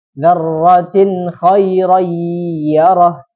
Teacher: hidungnya harus bergetar. Walaupun itu tidak terdengar bergetar ya, kalau tidak dipencet. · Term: bi gunnah